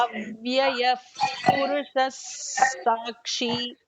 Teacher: the Visarga is sound, and there is a followed by a Sa sound. So it actually becomes an emphatic, a little emphatic Sa sound.